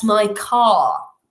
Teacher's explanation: No pronuncio la r · donde no vamos a realizar la r a no ser que quede intervocálica